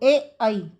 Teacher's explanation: ए आई का जो उच्चारण है वो कंठ और तालु से हो रहा है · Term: कंठ तालव्य